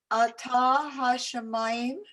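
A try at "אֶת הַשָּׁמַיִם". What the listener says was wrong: It's careful. It's not ata. It's a little shorter. Et.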